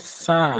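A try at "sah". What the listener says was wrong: It's not sa, it's za. It's sa doana, it's za. It's za.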